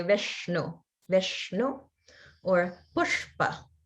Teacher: like the word pushpa, the sha is the retroflex sha.